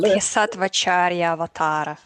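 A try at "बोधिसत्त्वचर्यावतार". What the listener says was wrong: Almost. You didn't pay attention to the long A's, though. The Bodhisattva Charya are all short A's. Bodhisattva Charya. Charya, all short. But the last one is avatara, but it's combined with the last A in Charya. So when those two A's come together, they make one long A.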